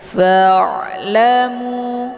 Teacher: Ain ini bukan bacaan yang mesti ditekan tapi dialirkan · Jadi cara baca ain ini adalah dialirkan karena dia ada sifatnya tawasud. Jadi tawasud itu antara ditekan dan ditahan, jadi dialirkan setengah.